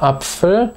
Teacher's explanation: im Wort Apfel macht es einen kleinen Klack vor dem A, aber wir schreiben ihn nicht hin. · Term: Knacklaut